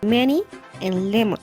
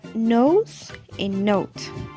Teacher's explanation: here in these sounds air can only escape through the nose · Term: nasal sounds